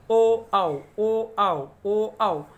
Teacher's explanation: ओ आणि आव याचा उच्चार करते वेळेस आपलं कंठ आणि ओठ यांच्यामधून दोहीमधून याचा उच्चार निघतो म्हणून याला कंठ ओष्ठे असे म्हणतात.